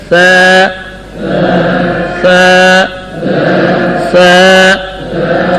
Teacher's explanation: ایک الف کے برابر لمبا کرنا ہے کیونکہ اس میں مد اصلی ہے